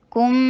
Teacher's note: کاف کے اوپر ضمہ، ہونٹوں کو گول کیجئے، کم میم کے اوپر اکمل غنہ کیجئے